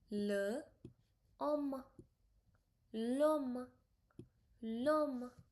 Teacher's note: So H does not carry throat sound like it does in English.